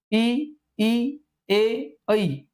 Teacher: इ ए यांचा उच्चार होताना जिभेचा जो पुढचा भाग आहे त्याचा वापर आपण करत असतो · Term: अग्रस्वर